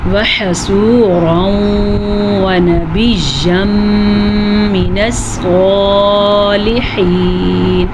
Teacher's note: صاد کو پر پڑھا کیونکہ صاد ہمیشہ ہی پر پڑھا جاتا ہے